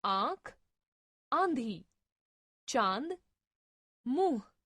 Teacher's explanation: नाक से बोले जाने के कारण इन वर्णों को अनुनासिक कहा जाता है।